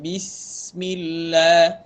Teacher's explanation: Sifat hamas pada huruf sin, lamakan sedikit.